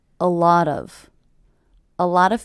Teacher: with the stress happening on the middle word